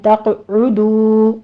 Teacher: تقعدو میں قاف کے اوپر قلقلہ کریں گے اور قاف کو پر بھی پڑھنا ہے ، عین کی آواز ضمہ کی ہے، ہونٹ گول کیجئے، تقعدو